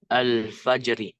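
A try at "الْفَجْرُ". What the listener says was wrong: Al-fajru. Al-fajru ya. Ru. Al-fajru. Kenapa kita baca al-fajru? Enggak al-fajro atau al-fajri saja? dalam bahasa Arab ya, asli kata itu harokatnya domah.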